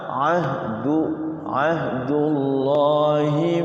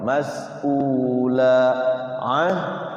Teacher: Ain di sini di tengah-tengah tenggorokan. Wasul halqi. Hamzah itu di bawah tenggorokan. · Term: hamzah sama ain